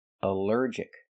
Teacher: Here the ALL is not pronounced all, but pronounced like in cup and up, because it's not stressed.